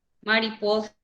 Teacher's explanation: Mariposa, su sílaba tónica es po